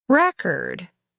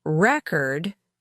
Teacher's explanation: Record, with the stress on the first syllable, means a document or a piece of music, while record, with the stress on the second syllable, means the act of recording something.